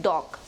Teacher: The fourth consonant is the D sound, as in dog. It is described as a voiced alveolar plosive consonant.